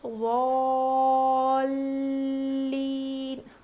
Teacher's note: اب یہاں پر غلطی کیا کرتے ہیں، ولا الضالین اس طرح سے نہیں، غلط ہے یہ. یہاں پر لام پہ تشدید ہے تو یہاں پر ہم تھوڑا وزن روکیں گے، یعنی ضالین.